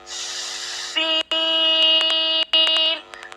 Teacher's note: जबान की नोक और दोनों दांतों के अंदरूनी किनारे से सीन अदा होता है